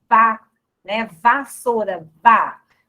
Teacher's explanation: você encosta os dentes no lábio inferior